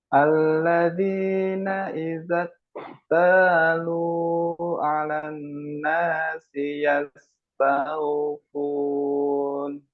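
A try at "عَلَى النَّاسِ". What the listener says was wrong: Tinggal mungkin tadi ininya ya, ainnya perlu diperjelas lagi ya. Tadi masih samar-samar seperti terdengar ala ala a alan nasi.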